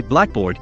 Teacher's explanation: ad hoc adjective noun combinations for example if I say Blackboard I place primary stress on the first syllable black